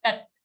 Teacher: don't make the last full sound, it's only a halant ta, tat. Okay, next shloka, Didi.